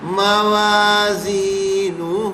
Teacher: اچھا یہ نو ہو برابر نہیں کرنا، ہو بڑا کریں گے، اس لیے کہ اس میں واو مدہ ہے چھپا ہوا